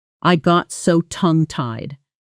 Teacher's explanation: tongue tied itself gets a heavy stress on the first syllable